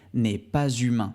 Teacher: ici tu peux voir que j'ai fait la liaison entre pas et humain pourquoi et bien tout simplement parce que humain le h2 humain